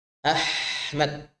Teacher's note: Ha, ya udaranya keluar, suaranya pun panjang. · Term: huruf ha